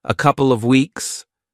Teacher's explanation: did you also notice how he dropped the v in of he said a couple of weeks not a couple of weeks